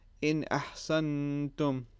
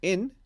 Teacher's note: You don't have the prolongation of the nasal sound